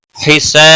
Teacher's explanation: سا الف مدہ ہے ایک الف کے برابر کھینچ کر پڑھیں گے